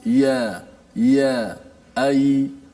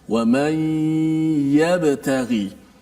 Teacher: Huruf ya-nya, makhrajnya di mana? Adalah di tengah lidah. Jadi sama-sama bila kita baca jumpa huruf ya saja, kita boleh fokus di tengah lidah.